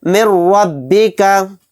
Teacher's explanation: یعنی اس کے اندر غنہ نہیں کریں گے، میم کو را میں بہت جلد ملا کر پڑھیں گے۔ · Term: ادغام بلا غنہ